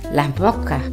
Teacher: aspiración o eliminación de ese al final de sílaba o palabra